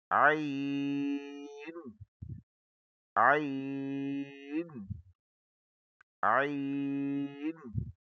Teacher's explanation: گہرائی سے اور باریک کر کے عین درمیان کے گلے سے پڑھا جاتا ہے۔ یہ دیکھیں، یہ گلے کا سینٹر ہے۔